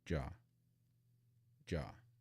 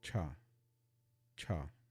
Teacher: cha you should feel a puff of air so that difference J no puff of air cha puff of air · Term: aspirated consonants